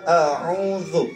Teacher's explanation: ujung lidah kita agak sedikit digigit oleh gigi atas gigi bawah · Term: Za